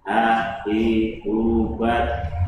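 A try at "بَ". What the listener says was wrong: Bah. Bah. Bah ya. Ini suaranya udah tenggorokan. Ha, hi, hu, bah. Karena kalau dada nanti nggak ada. Kalau tadi makhrajnya di tenggorokan bagian bawah.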